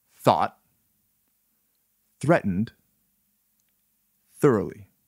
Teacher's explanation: The voice remains passive. The vocal cords do not vibrate. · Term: Voiceless TH